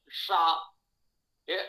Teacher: शा जो है ये मूर्धा को स्पर्श करेगी जिह्वा, तो आप शा बोल पाएंगे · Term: मूर्धन्य उच्चारण